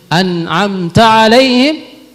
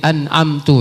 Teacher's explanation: yang tadinya fathah ya tertukar dengan dhammah